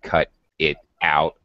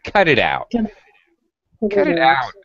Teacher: I'm joining these sounds very, very closely. It sounds like one word.